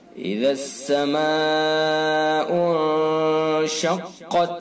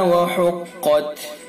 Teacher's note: اذا السماء انشقت، اور قاف کے اندر قاف کو جو ہے پر کر کے پڑھیں گے، چونکہ حروف مستعلیہ میں سے ہے قاف، اس لیے قاف کو پر کریں گے۔